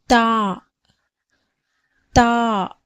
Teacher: தாவுடைய பிறப்பிடம் நாவின் நுனி மேல் வரிசை நடுப்பற்களின் ஈரை தொடும்போது பிறக்கப்படுகிறது. அதாவது நாக்கோட நுனி மேல் வரிசை நடுப்பற்கள் இருக்கு இல்லையா, அதோட நுனி அந்த வேரை தொடும்போது நமக்கு தாவுடைய சப்தம் பிறக்கப்படுகிறது.